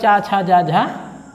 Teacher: स्पर्शी संघर्षी व्यंजन में चा वर्ग के सभी वर्ण आते हैं।